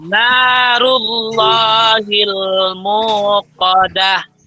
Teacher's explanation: Kemudian narullahil mu-nya panjang sebanyak 2 harokat atau 2 ketukan.